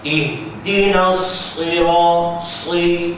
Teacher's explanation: walaupun dia baris bawah sad ini dia tetap tebal.